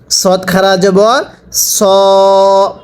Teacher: সদের উচ্চারণ একরকম সিনের উচ্চারণ আরেকরকম। সদটা উচ্চারণের সময় ঠোটগুলো হালকা গোল হবে।